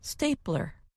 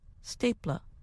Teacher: is the sound of r at the end of a word in American English that sound is a strong r as in stapler in British English the sound is closer to a stapla